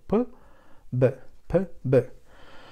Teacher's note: We give air to the mouth cavity, and we let the lips go open, or in other words, open lips, and we'll have P, B, and if we add voice, that will be B. So there is no aspiration in Italian language. It's not like English P.